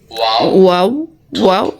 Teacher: গোল করিয়া ওয়াও গোল রাখিয়া ওয়াও উচ্চারিত হয়